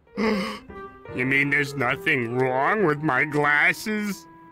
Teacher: この前置詞▁with▁の発音はここでは▁th▁の音がほとんど聞こえてません。